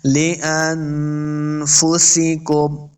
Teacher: نون ساکن کے بعد فا حروف اخفا سے ہے، تو اخفا کا قاعدہ یعنی غنہ کرنا ہے۔ لانفسکم، سین پہ سیٹی کی آواز آئے گی، انفسکم۔